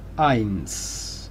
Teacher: Una S sorda, sin vibración, sin zumbido de abeja.